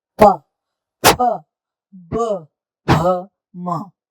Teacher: अगर आप दोनों होठों के बीच में पेंसिल या उंगली रखें तब इन अक्षरों को आप नहीं बोल सकते, तो इनका उच्चारण दोनों होठों के मिलने से होता है।